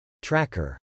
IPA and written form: trˈækɚ (tracker)